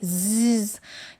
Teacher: You can feel the vibration. This is a voiced sound.